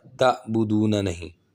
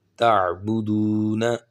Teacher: تا زبر عین تا، با پیش بو، تعبو، دال پیش واو دو، تعبدو، نون زبر نا، تعبدون۔ اب یہاں پہ عین کی آواز نکلنی چاہیے، حمزہ نہیں پڑھنا، تعبدون نہیں، تعبدون۔